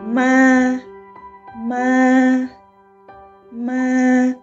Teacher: when you pronounce this tone, it means you should keep your voice high and flat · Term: không dấu